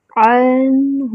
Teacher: نون پہ الف صغیرہ بنی ہوئی ہے، اس کو 2 حرکات برابر لمبا کریں گے۔ عنہ، عین کا مخرج وسط الحلق، نون ساکن ہے، نون کو ہلانا نہیں ہے، ہا پر ضمہ ہے، ہونٹوں کو مکمل گول کریں گے، اور ہا کا مخرج اقصی الحلق۔